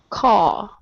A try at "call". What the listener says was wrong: Okay, almost. So right now you're not touching the top of your tongue or the top of your mouth. You're saying caw. So the difference is that your tongue reaches up and touches the top. So I want you to say caw, call.